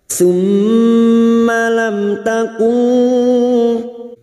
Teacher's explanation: Mim sukun bertemu ta idhar syafawi, mim sukun dibaca jelas tanpa mendengung